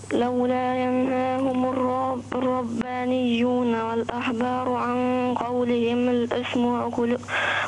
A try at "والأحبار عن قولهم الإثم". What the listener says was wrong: ضم الميم. والأحبار عن قولهم الإثم.